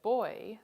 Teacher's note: starts out with the tongue and lip position for or and moves to the position for e